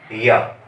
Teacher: जिस वर्ण को हम उच्चारण करते हैं उससे ध्वनि निकलती है, और उससे जो स्पर्श होता है, जैसे हम बोलते हैं या, तो हमारी जीभ तालु को छूने का प्रयास करती है, तो ये स्पर्श होता है।